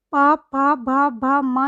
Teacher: प, फ, भ, भ, म जब हम इनको बोलते हैं तो हमारे होठ आपस में टकराते हैं बोलते हुए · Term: औष्ठ्य व्यंजन